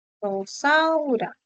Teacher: ¿Por qué Rosaura? Porque Rosaura presenta como sonido inicial a la vibrante múltiple